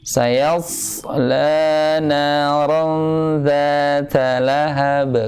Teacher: Kalau hamzahnya kan hanya udara yang keluar. Tapi kalau shafir ada bunyi siulan.